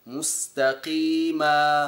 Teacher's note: مستقيما هو لفظ القاف المكسوره هكذا بدرجه عاليه من الاستعلاء و ينبغي ان يكون او ان تكون درجه التفخيم ادنى من ذلك لانها ادنى درجات التفخيم اذا كان حرف الاستعلاء مكسورا